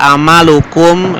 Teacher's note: amalukum dibacanya kumnya jelas karena huruf depannya itu bukan mim atau ba tapi wau ya. Maka dibacanya jelas. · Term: izhar syafawi